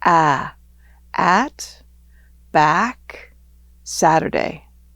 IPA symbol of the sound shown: æ